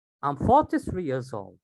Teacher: So I made 43 a bit louder. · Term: stress